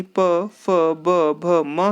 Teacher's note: प वर्ग यानी प, फ, ब, भ, म की बात करते हैं, तो ये ओष्ठ अर्थात दोनों ओठों से बोले जाते हैं। व और फ, ये आपका दंतोष्ठ होता है, यानी निचले ओठ और ऊपरी दांतों की सहायता से बोले जाते हैं।